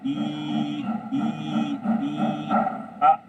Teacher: ई जो हमारी टंग है वो दांतों के पास आ रही है।